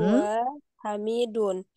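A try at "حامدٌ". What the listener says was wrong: Hamidun. Haknya panjang ya.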